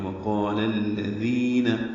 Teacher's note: وقال میں واو ہونٹ کی نا تمام گلائی سے ادا کریں گے، قاف پر پڑھیں گے اور اس کا الف مدہ بھی پر ہے، لام باریک ہے اور الذین کے لام سے ملا دیں گے.